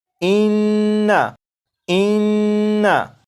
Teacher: جیسے یہ جو لفظ ہے اس لفظ کو اگر پڑھیں تو اس لفظ میں کیونکہ نون مشدد ہے تو اس میں ہمیشہ غنہ کر کے پڑھیں گے